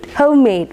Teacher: both the syllables are stressed